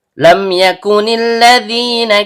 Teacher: Karena mimnya sukun bertemu dengan huruf ya yang keluar dari tengah lidah naik memantul ke langit-langit, maka terjadi hukum bacaan izhar syafawi. Bunyi mim sukunnya dibaca jelas tanpa dengung.